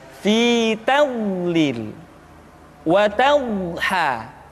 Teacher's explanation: sifat al-istitalah, yaitu suara kita memanjang dan terdengar lembut suaranya ketika diucapkan. Tidak diucapkan seperti ini, ad-do, fi tadlil, tapi diucapkan dengan suara yang lembut, memanjang suara kita.